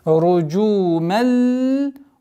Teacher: здесь танвин, после которого идет лям, и у нас ассимиляция без назализации